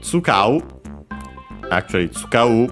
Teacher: tsukau, because it should be unaccented